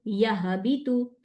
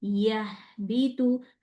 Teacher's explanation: ह को जारी रखना है रोकना नहीं है अगर मैं इसको जल्दी पढूंगी यानी इस वर्ड वर्ड पे जब हा आएगा तो ह के ऊपर मैंने इसको थोड़ा टाइम देना है।